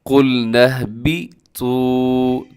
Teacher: تو کو لمبا کرنا ہے کیونکہ واو یہاں پہ مدہ ہے، واو ساکن سے پہلے پیش ہو، واو مدہ ہوتی ہے۔